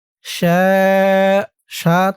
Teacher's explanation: চার আলিফ টান মধ্যে মুত্তাসিল